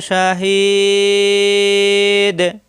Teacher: তিন আলিফ টেনে দালে এসে কলকালা